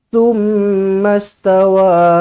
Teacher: Mim sabdu wajibul gunna, dengungkan dua harkat. Pastikan di sini cukup dengungnya dua harkat. · Hamzah wasal pada tengah-tengah kalimah, tidak berfungsi, tidak perlu dibaca.